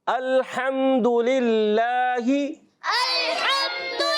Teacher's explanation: ہا کی ادائیگی کلیئر رکھنی ہے, حلق کے درمیان والے حصے سے